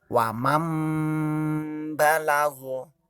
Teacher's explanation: Jadi cara membacanya bukan waman, tapi langsung ke baknya. Jadi huruf mim. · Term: iqlab